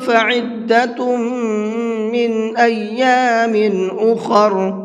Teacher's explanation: یہاں پر غنہ کریں گے، اس لیے کہ تا کے اوپر تنوین ہے اور تنوین کے بعد میں میم ہے۔